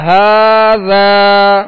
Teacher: ہا پر کھڑا زبر ہے اور ذال کے ساتھ الف مدہ ہے، لہذا دونوں کو ایک ہی مقدار میں کھینچیں گے۔ کھڑا زبر بھی الف مدہ کے قائم مقام ہے اور آگے الف مدہ ہے، 2 حرکت یعنی ایک الف کی مقدار دونوں کو برابر کھینچیں گے۔